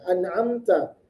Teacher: Nun bertemu dengan ain. An'a dibaca izhar, tidak boleh dibaca samar